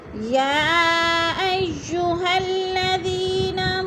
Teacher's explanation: یا ایو مد متصل ہے، 4 الفی مد ہے، 4 الف کے برابر ہم نے اس کو کھینچ کر پڑھنا ہے۔ الذین، زی پہ یا مدہ ہے۔